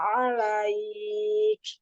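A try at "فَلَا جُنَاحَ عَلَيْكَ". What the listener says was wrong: Fala junaha alaik. Selesaikan harokat fathahnya. Jadi nggak setengah harokat. Satu harokat itu kayak huruf A kalau fathah ya.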